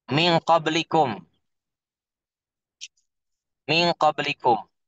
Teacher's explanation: Gunnahnya tafkhim. Gunnahnya tebal.